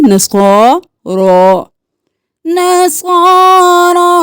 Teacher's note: صاد بھی موٹا رو بھی موٹا کھڑی زبر ہے الف کے برابر کھینچے